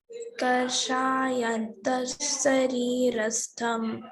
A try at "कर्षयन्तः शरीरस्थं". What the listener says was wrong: కర్ష లేదమ్మి, కర్ష దీర్ఘం లేదు. కర్ష ఎంత శరీరస్థం.